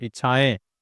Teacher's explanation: इच्छाएं तो यहां पे मुंह का भी और नाक का भी दोनों का इस्तेमाल हो रहा है। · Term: चंद्रबिंदु